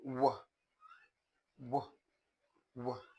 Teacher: These are sounds produced in a way that the articulators look as if they are coming together, but not really touching each other. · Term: approximate